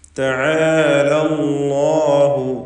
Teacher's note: അല്ലാഹ് എന്ന ഇസ്മുൽ ജലാല അതിലുള്ള ലാമിനെ തഫ്ഖീം ചെയ്ത് തടിപ്പിച്ച് ഉച്ചരിക്കേണ്ടതാണ്